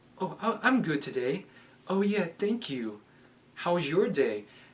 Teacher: I said it in a very high-pitched voice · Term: uptalk